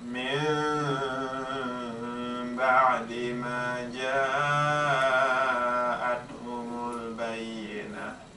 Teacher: So the noon gets changed into a meme, and then we leave a little bit of space when we read it, and then we have a ghunna. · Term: Al-iqlab